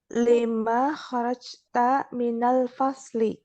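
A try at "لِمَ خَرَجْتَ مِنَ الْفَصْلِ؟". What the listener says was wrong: Pertanyaan, Bu. Nadanya pertanyaan.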